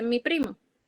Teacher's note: Si yo digo mi primo, es como si el mi se uniera más a primo